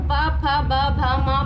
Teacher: जब हम प, फ, ब, भ, म बोल रहे हैं तो हमारी जीभ कहीं भी स्पर्श नहीं हो रही है, बल्कि हम ये होठों से ही बोल पा रहे हैं। ठीक है, इसलिए इसका नाम है ओष्ठव्य व्यंजन।